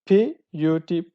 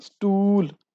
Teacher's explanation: put ooh sound is produced or pronounced shortly but in the next example stool the Oh sound is elongated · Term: long and short vowels